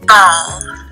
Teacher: As you can see, pulses are visible during the onset of the plosive B when ball is stated. Vibration begins right away, and so voicing starts.